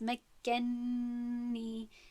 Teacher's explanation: به نون ادغام میکند، یعنی که طرز خواندنی درستش نون به نون ادغام شدن هست و با غنه تلفظ شدنی این کلمه هست